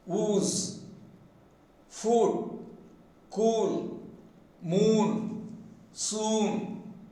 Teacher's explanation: You see, the back of the tongue has been raised to the maximum.